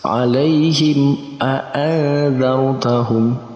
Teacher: mim sukun bertemu dengan hamzah masuk dalam kategori izhar syafawi. Sama, harus dibaca jelas.